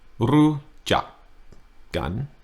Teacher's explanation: Rujak, one word. The first half of the word, high tone. Second half of the word, low tone.